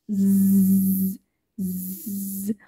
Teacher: عندي صوت ز برضو من الأصوات اللي اللسان فيها لمس الألفيولار ريدج. عندي كمان برضو your tip of the tongue is against the alveolar ridge.